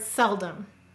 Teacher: Sel is stressed, dumb is unstressed. · the first syllable cell is said very clearly you hear the e but that second syllable Dum seldom you hear an a sound